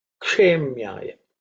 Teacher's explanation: It's uk and sh, which is cerebral sh.